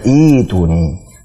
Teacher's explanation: Itu kan harusnya i'tuni taib, tapi karena ada hamzah wasal ketemu dengan hamzah qata' sukun dan berat pengucapannya i'tuni, maka menjadi mad badal